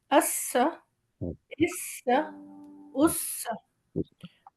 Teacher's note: سین میں آواز سیٹی کی طرح نکلتی ہے